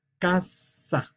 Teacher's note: alargamos más la consonante que esta doble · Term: consonantes dobles